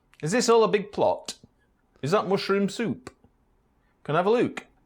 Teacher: Final PT and K sounds at the end of sentences could be pronounced as ejectives. These are sounds found in some Bantu languages as well as Amharic and many languages in North America.